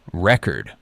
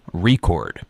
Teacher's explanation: when it's a noun, you stress the first syllable, record. But when it's a verb, it's the second syllable, record.